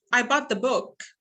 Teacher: It's a sentence, it's a statement, and last time we did say that when it is a statement I do have a falling intonation